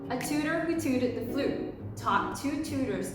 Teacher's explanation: for Americans, we will tend to round off the T a little bit to come into a D-ish sound. So that is how we would sound the T's when we're using the American accent.